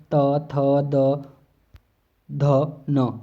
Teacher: हमारा जो जीभ है ना वो दांत पर लगेगी ही लगेगी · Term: दंत वर्ग